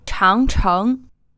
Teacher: This is 2 2nd tones, and this word means great wall.